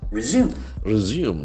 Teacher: Resume, the accent falls on second syllable.